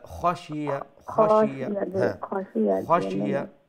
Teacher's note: খ গলার উপরের অংশ থেকে উচ্চারণ হবে এবং ফুল মাউথ মুঠা করে উচ্চারণ হবে এবং তার মধ্যে একটা মোলায়েমতা থাকবে।